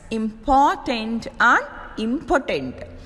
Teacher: said like this important and important both words have three syllables the second syllable in important is said with more force than the other two syllables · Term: stress